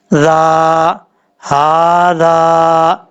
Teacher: ज़ाल को बगैर सीटी के साथ पढ़ेंगे, ज़ाल के आगे अलिफ है, एक अलिफ की मकदार, इसको लंबा करके पढ़ेंगे।